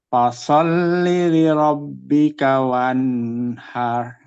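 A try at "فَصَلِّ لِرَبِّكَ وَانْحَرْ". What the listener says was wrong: Lagi, jangan ditahan. Wanhar. Lagi.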